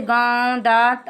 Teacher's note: अनुनासिक के उच्चारण में नाक से सांस बहुत कम निकलती है और मुख से अधिक, जैसे गांव, दांत आदि।